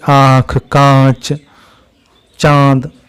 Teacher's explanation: जिनका उच्चारण करते समय हवा मुख के साथ-साथ नासिका से भी निकलती है उन्हें अनुनासिक स्वर कहते हैं